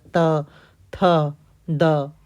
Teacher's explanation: फिर त दंत से है। आपका जो जीभ है वो आपके दांत से टकराता है।